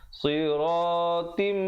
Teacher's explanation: Siratim, di situ idgham bi gunnah, tanwin bertemu mim. Asalnya siratin, tetapi bila bertemu mim jadi siratim dan didengungkan 2 harakat.